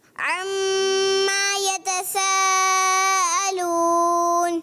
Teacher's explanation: اور میم کی زبر لمبی بھی نہیں کرنی، اس کا بھی خیال رکھنا ہے